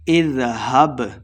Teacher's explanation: با حروف قلقلہ سے ہے، ساکن خوب واضح کرنا ہے